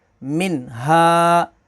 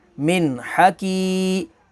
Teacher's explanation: मीम नून ज़ेर मिन, हा ज़बर हा, मिन हा। अब यहाँ पर नून साकिन के बाद अगला लेटर हा है, हा हरूफ़ हलकी है तो यहाँ पर इज़हार होगा